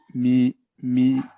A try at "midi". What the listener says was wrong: MIDI. Good. Next.